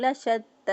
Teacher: تا جو ہے اس کو مضبوطی قوت کے ساتھ، کیونکہ اس کو شد ہے، کھڑی زبر کو 1 الف کے برابر لمبا کیا.